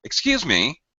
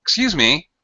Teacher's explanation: your tone or pitch changes are abrupt and very high very low dropping and rising in Pitch very quickly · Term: drop rise intonation